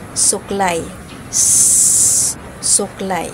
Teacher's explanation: panggilagid na titik s ang paraan ng artikulasyon nito ay pasodsot na walang tunog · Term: pasutsut na walang tunog